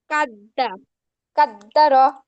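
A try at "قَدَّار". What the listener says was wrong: না, কা বললে তো আবার কফ হয়ে যায়, ক, ক, কফ, কফ। কদ্দার, কদ্দার।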